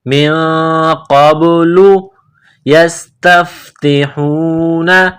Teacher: قاف کو با کے ساتھ ملانا ہے، با ساکن ہے، قلقلہ کریں گے